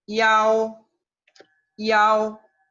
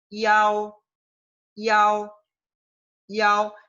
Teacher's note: Primero se pronuncia una I corta y después se pronuncia la AO que ya habíamos aprendido